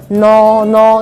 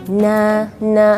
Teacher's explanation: pangkal lidah tidak bertemu langit-langit Jadi tidak boleh no no enggak tapi nah nah seperti itu